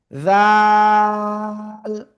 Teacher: জিহ্বার আগা সামনের উপরে দুই দাঁতের আগায় লাগিয়ে তিন আলিফটা নিয়ে উচ্চারণ করব